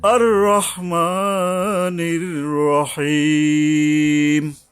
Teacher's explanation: রহ হলো হরফে ইস্তিওয়ালা, মানে এটাকে মোটা করে পড়তে হবে।